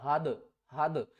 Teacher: اس سے پہلے حروف قلقلہ میں سے دال ہے تو دال کے اوپر قلقلہ کرنا ہے، کس طرح، ہا دال زبر حد، حد یعنی کہ آواز تھوڑی سی واپس آئے گی